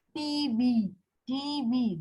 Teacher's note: Spondylic is two stressed syllables, combination of two stressed syllables.